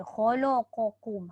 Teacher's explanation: jangan disebabkan lam itu diapit oleh kha dengan qaf, lam tu kita ikut sekali